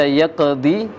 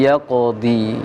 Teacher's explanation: untuk qaf sukun, qalqalanya sedikit ditebalkan. Jangan baca yaqdi tapi yaqdi.